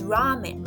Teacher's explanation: you want to drag that ra sound a little bit extra